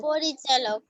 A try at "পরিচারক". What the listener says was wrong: না চালক না, চারক, পরিচারক। চোয়াকার র ক।